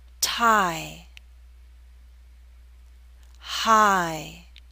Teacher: It may help you to know that there's a slight Y sound, y, that makes the glide possible, I. This long I sound is usually spelled with an I or IE, although there are other spellings.